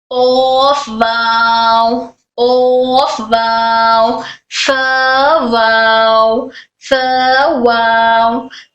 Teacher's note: वाव rounding off lips से अदा होता है।